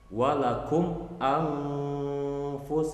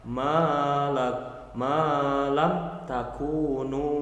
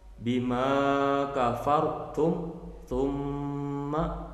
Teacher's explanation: Nah, mimnya benar-benar dibaca jelas tanpa samar, tanpa gunnah. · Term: idhar syafawi